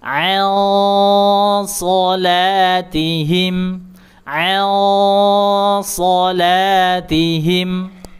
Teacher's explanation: Kemudian ini juga nun sukun ada huruf so, maka nun sukunnya disamarkan, diarahkan ke huruf so, kemudian diberikan sifat tebalnya. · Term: dengung tebal